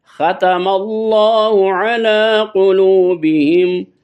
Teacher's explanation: اللہ کی لام کو پر پڑھیں گے